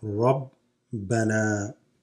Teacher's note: The alif there extends the noon.